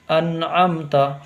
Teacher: ان میں گنہ بالکل نہیں کرنا ہے، اظہار ہوگا اس میں کیونکہ نون ساکن کے بعد عین ہے